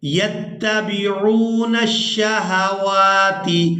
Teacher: واو کو کھڑی زبر کی وجہ سے کھینچ کر ادا کریں گے